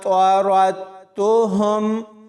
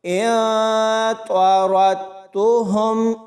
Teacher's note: را کو آگے تا کے ساتھ ملانا ہے، کیونکہ کہیں بھی ساکن اور شد والے حروف اکٹھے آ جائیں تو ہم نے ساکن حرف کو چھوڑ کر شد والے حرف کے ساتھ ملاتے ہوئے پڑھنا ہوتا ہے۔ تو یہاں اس را کو تا کے ساتھ ملائیں گے اور را کو پر یعنی موٹا پڑھیں گے